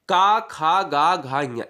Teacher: जो कंठ से बोले जाते हैं वो काखा गाघा इंग्या हैं